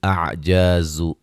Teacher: زا کو سیٹی سے ادا کریں گے